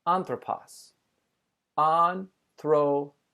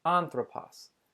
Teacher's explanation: I've put the emphasis at the beginning of the word, anthropos.